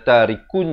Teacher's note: Iqlab iaitu menukarkan daripada bunyi nun kepada bunyi mim dengan kadar panjang 2 harakat.